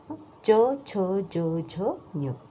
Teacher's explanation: टाळूचा स्पर्श होतो, म्हणून तिथे तालव्या